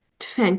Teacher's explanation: Tüfəng sözü G öz kar qarşına keçir. Tüfəng şəklində tələffüz olunur. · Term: cingili samitin karlaşması